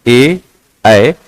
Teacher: ए, ऐ वर्ण जो है वो कंठ तालव्य कहलाते हैं